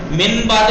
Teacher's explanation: نون ساکن کے بعد بے آ جائے تو اس کو میم سے بدل کے پڑھیں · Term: اقلاب